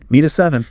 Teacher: The hard T in meet becomes an alveolar tap-a-soft D sound because the tongue is just briefly bouncing off the roof of the mouth as it rushes toward the vowel in at